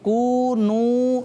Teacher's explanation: यहाँ पर भी वाव मद्दा है, इसको भी 1 अलिफ खींच के पढ़ेंगे। कू नू, नू में भी वाव मद्दा है, इसको भी 1 अलिफ खींच कर पढ़ेंगे।